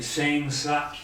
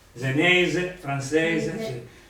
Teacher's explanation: La sorda è quella di senza in senese, senza S, senza. Sonora è quella di senese, francese.